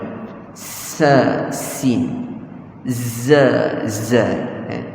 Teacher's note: Keluar daripada hujung lidah, pangkal gigi bawah, dan dia kongsi sifat yang sama, adanya desiran.